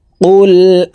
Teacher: ইকফা গুন্না নুন সাকিনের পর ইকফার হরফ তা আসছে এই কারণে এই নুন সাকিনকে নাকের ভিতরে লুকাইয়া গুন্নার সহিত পড়বো